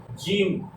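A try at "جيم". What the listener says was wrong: আরো টেনে বলেন জিম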